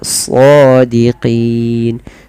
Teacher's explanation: tebalkan sodnya karena dia bukan so, dia so ya, shadiqin.